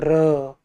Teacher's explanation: र जब बोलते हैं ना तो देखिए जीभ में कंपन होता है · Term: प्रकंपित